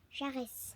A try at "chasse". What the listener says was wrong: Non. Pourquoi il n'y a pas de R, ma chérie? Chasse.